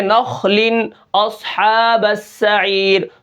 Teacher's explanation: اب اس کے بعد جو 5واں درجہ ہے وہ یہ ہے کہ اگر یہ حرف ساکن ہو تب بھی یہ حروف موٹے ہوں گے، جیسے نخل اصحاب السعیر، صاد کے اوپر جزم ہے، خا کے اوپر بھی جزم ہے، لیکن یہ حروف موٹے پڑھے جا رہے ہیں